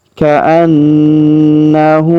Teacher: Baik, perhatikan di ayat ke-33 terlebih dahulu. Ka'annahu, huruf na kita tahan dan kita dengungkan 2-3 harokat karena terdapat tanda tasdid di atas huruf na. Ka'annahu, kemudian huruf hu kita panjangkan 2 harokat karena berharokat u terbalik seperti ini.